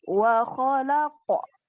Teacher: Pantulan qalqalah harus dikuatkan ya. Jadi terdengar pantulannya.